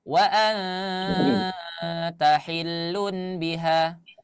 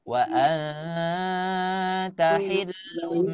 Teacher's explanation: Suara nun digantikan menjadi suara mim yang seharusnya wa anta hillun biha, tapi diganti menjadi wa anta hillum ya, itu namanya iqlab.